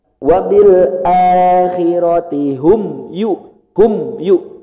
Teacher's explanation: Ini berada di tingkatan keempat. Ada peran hidung tapi enggak lama. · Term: Mim sukun